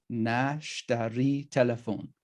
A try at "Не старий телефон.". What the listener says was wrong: Okay, not sh, but snakes. Старый. Не старый. like in snake. Старый. Не старый.